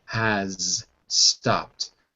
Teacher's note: But again, if you're speaking quickly, you could drop the Z, like has stopped. You could just drop the Z only when you're speaking quickly. But if you say it word by word, you have to say the Z.